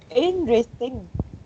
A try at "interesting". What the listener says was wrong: Interesting. Because a while ago you said interesting. So just 3 syllables. Interesting.